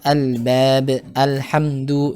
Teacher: di mana pada Al-Qamariyah ini dibaca dengan idhar atau jelas al-nya ya